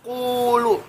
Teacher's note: qulu jadi panjang 2 harkat. Ini namanya huruf mad.